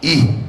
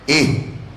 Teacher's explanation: Hamzah ha bunyinya i, bukan ih.